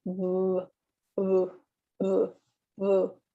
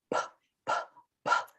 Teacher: the B sound, we're putting our 2 lips together, and also our voice box is engaged. So you will feel a vibration in your throat.